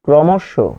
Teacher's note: ক্র হয়ে যাচ্ছে ক্র, ম হয়ে যাচ্ছে মো, তালব্য হয়ে যাচ্ছে শো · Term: মধ্য অ এর নিয়মে